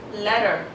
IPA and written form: ˈletə (letter)